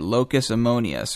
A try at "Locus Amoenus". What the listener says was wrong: Well, you gave it kind of a Latin pronunciation. Yeah, and it is a Latin phrase, but American speakers say Locus Amoenus or Locus Amoenus. So I prefer Locus Amoenus.